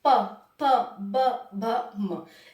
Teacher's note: ओस्ट में क्या होता है होट बजते हैं हमारे